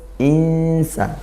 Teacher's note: Satu di antara 15 huruf ikhfa haqiqi ya. Maka samar nun sukunnya bertemu sin